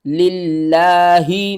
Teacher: اور لفظ اللہ سے پہلے جب زیر ہوگی تو ہم لفظ اللہ کو باریک کر کے پڑھیں گے